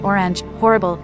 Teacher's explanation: For many other speakers in North America, the vowel in words like horrible has merged in another direction, with the vowel of glory. American English speakers with this merger, like me, say orange, horrible, etc.